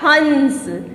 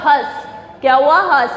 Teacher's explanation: नाक में बोला ना मैंने, शंख, नाक से आवाज आई ना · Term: अनुस्वार